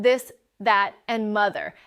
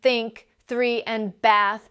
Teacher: There are actually two different th sounds. The voiced one in this, that, and mother and the voiceless one in think, three, and bath and most learners don't even realize these are two separate sounds, not one.